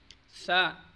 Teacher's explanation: جن لوگوں سے ثا ادا نہیں ہوتا تو وہ کوشش کریں کہ زبان کی نوک ذرا سی باہر کی طرف نکال کر ادا کریں، ورنہ ثا ادا کرتے وقت زبان کی نوک اوپر کے دانتوں کے کناروں سے یا سرے پر لگتی ہے۔ سیٹی کی آواز نہیں نکالنی، بہت نرم آواز نکالنی ہے